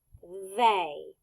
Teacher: the TH is the expected part because it is the voiced sound